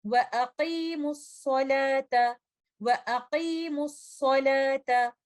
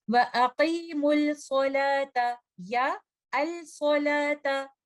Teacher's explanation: آپ کو لام ساکنہ کی کوئی آواز نہیں آئے گی کیونکہ لام ساکنہ پورے کا پورا مرج ہو چکا ہوگا لیٹر صاد کے اندر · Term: لام ساکنہ کا ادغام